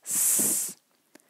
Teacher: there is no voice behind this s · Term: voiceless